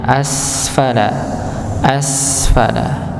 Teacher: ketika kita mendapati huruf Sin Ya Sukun maka dia akan tampak sifat mengalirnya asfala asfala ng jangan sampai dipantulkan asfala asfala